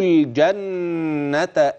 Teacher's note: اللام في كلمه الجنه واضحه بينه مظهره لام قمريه حكمها الاظهار